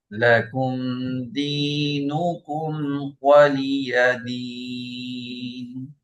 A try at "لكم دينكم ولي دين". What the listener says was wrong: আর কাফের উচ্চারণটাকে আরেকটু শক্ত করতে পারলে ভালো হবে, যেমন লাকুম, কুম, কু, কা, কি, কু। উম, লাকুম দিনুকুম ওয়ালিয়া দিন। মাখরাজে আমাদের সম্পর্কটাকে একটু মজবুত করা, যেহেতু এখানে সিদ্ধা সিফাত, এই জন্য।